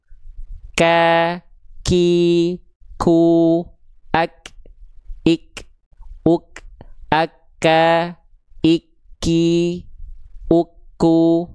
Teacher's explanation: kalau kaf agak keluar, dia nggak sepenuhnya nempel ke langit-langit lunak, tapi agak ke depan juga. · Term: huruf kaf